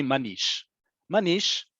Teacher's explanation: instead of saying manishma we've taken out a syllable and it's just simply manish